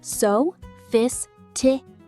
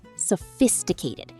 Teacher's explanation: Focus on the stress on the second syllable.